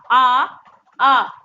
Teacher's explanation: तो आपका उच्चारण स्थान कहाँ से हो रहा, कंठ से हो रहा है, जोर कहाँ पड़ा, कंठ में पड़ रहा है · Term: कंठज्ञ